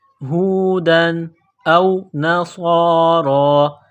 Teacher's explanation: ہے تو تنوین پر غنہ نہیں کریں گے، ہودن او نصارا، صاد میں سیٹی کی آواز پیدا کرنا ہے، صاد کو موٹا کرنا ہے ، را کے اوپر کڑا زبر ہے، ایک الف کے لمٹ